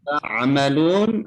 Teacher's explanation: ketika mengucapkan huruf ain ada tekanan di tenggorokan.